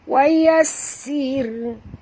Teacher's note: Ra sini ra tarkik kerana sin itu berbaris bawah. Wa yassir, tipis ya.